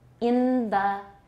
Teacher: in phrases such as in the or on the the n is realized as a dental